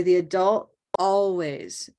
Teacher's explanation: With adult, because that T is at the end, we often will make it just a stop. We'll say the adult always. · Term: glottal